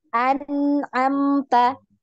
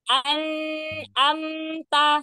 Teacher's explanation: Jadi tidak panjang ya, tidak dipanjangkan dua harokat, tapi dia hanya mengalir. Ya, dia mengalir karena punya sifat tawasud atau bainiyah ya. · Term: gunah